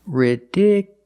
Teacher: the stress moved to the second syllable ridiculous so the last two syllables are short it's not U